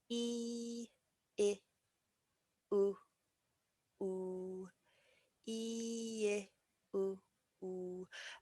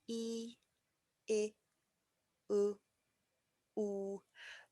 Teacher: my mouth gets more and more round as I make my way through this journey.